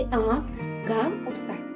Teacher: अनुनासिक इसका उच्चारण नाक और मुंह दोनों की सहायता से किया जाता है